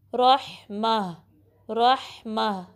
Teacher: مل لدن کا رحمہ، رحمہ، را کو ہیوی پڑھنا ہے، ہا کو درمیانے حلق کے حصے سے نکالیں گے اور پھر جو تا مربوطہ ہے اس کو ہا میں بدل دیں گے، ٹھیک ہے.